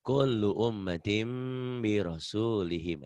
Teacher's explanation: Ini gampang kalau iklab setelah nun mati atau tanwin ada mim kecil. Berarti bunyi n-nya berubah menjadi m. Tapi bindeng.